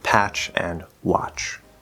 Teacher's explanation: The T is effectively silent, and it's just a ch sound, like in patch and watch.